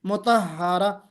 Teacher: ये वाली ता जिसको हम ताए मुदव्वरा कहते हैं, गोल ता कहते हैं, इस पर जब हम ठहरेंगे तो हमेशा हा की आवाज आएगी